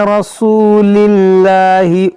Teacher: जलालत से पहले ज़ेर है तो इसको बारीक पढ़ेंगे लाम को, यहाँ पर रा पर ज़बर है तो इसको मोटा पढ़ेंगे।